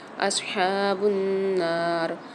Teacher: صاد کو موٹا پڑھیں گے، صاد کی آواز واضح ہونی چاہیے